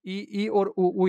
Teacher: और अगला है संवर्त, जिसमें जीभ इतनी अधिक ऊपर रहती है कि मुख से श्वास निकलने में अवरोध तो नहीं होता, परंतु उसके निकलने के मार्ग की चौड़ाई कम हो जाती है